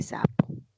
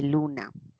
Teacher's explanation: el ápice se acerca a los alveolos y a ese nivel se va a producir el sonido S